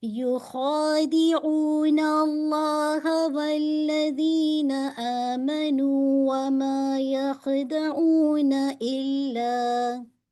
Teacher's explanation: آپ کا جو خا کا ہے، آپ کے یہ حلق سے نکلتا ہے